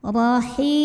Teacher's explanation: dibunyikan secara tafkhim karena barisnya fathah maka cara bacanya tebal pangkal lidah dinaikkan